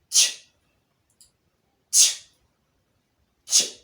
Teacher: When we pronounce ch sound, at the same time we will observe the explosion of the air. Remember we said the explosion is as a result of a partial rotation of the air before a sudden release of the air.